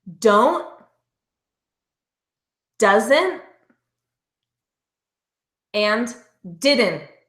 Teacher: notice the tongue staying up and not releasing